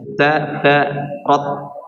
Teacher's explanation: Jadi kalimat tarot ini semuanya di ujung lidah dan gigi bagian gigi depan ya